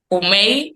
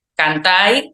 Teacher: Los imperativos con vocalización, en vez de decir la D, dicen una I. Comei sería comed, cantai, cantad y demás.